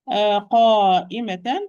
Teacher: this mad is going to be heavy, like qaf, because alif following the letter which preceded regarding being heavy or light. So no, you cannot even, if I try to make the mad light, it will be very difficult. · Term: mandatory connected mad